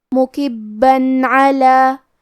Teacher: مکبن میں با پہ تشدید ہے، لہذا ہمیں 2 حرف کے برابر با کو پڑھنا ہے، کیونکہ تشدید کی اصلیت 2 حرف ہے. · حرف العین کی ادائیگی حلق کے درمیان والے حصے سے ہے